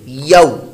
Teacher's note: لگے زبان کے درمیان اور اوپر تالو کے درمیان سے یہ مخرج ادا ہوتا ہے